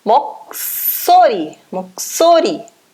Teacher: Esse S vai ficar mais forte, vai ficar duplo, tá? Vai ficar com som forte.